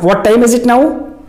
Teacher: This is the question with rising tone.